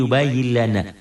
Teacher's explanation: lam atau ro dileburkan dimasukkan tanpa disertai dengan dengung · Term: idgam bilagunah